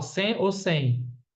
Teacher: Na palavra sem, eu falo sem ou sem. Sem é como esse M tivesse som de U. Então, três letras, três fonemas.